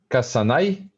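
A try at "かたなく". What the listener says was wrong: Not kasu, but remember this is this final syllable is tsu.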